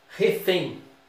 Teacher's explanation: Refém. A tônica é a última. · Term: Oxítona